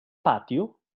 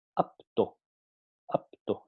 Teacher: en posición final de la sílaba, la P es implosiva y solo muestra las fases implosión y oclusión. Entonces, cuando P está al final de la sílaba, solamente pasa por la fase de implosión y oclusión, pero se pierde la fase de explosión.